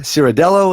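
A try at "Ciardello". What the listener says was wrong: Chardello. That CI is a CH.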